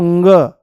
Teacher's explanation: नाक के जो नथूने हैं उन पर जोर पड़ेगा हवा के ज्यादा बाहर आने से · वायु जो है वो मुंह से नाम मात्र के लिए बाहर निकलेगी पर नाक से ज्यादा निकलने की कोशिश करेगी